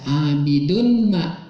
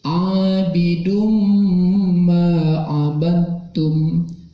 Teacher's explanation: Ada idgham, wala ana abidum ma, tanwin bertemu dengan huruf mim dimasukkan. Jadi tidak dibaca abidun ma, tapi abidum ma abadtum, memakai dengung